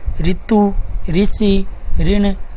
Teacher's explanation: ऋ का हिंदी में शुद्ध प्रयोग नहीं होने के कारण ऋ र प्लस ई के उच्चारण के रूप में प्रयुक्त होने लगा है